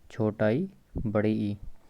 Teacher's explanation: Number 1 बात कर लेते हैं तालव्य। तालव्य जीभ के तालु के पास आ जाने से उच्चारित स्वर तालव्य स्वर होते हैं